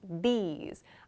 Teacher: So my tongue begins against my teeth, and then I move to an E sound, these. I make the sound when I release my tongue from that position, these. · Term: that sound